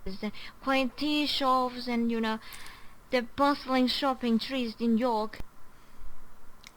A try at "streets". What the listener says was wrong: Man, that street sounds like trees to me.